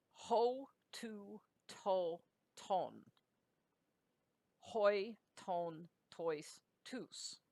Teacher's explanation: the ones that begin with a vowel are all rough breathings so they're pronounced with an H sound on them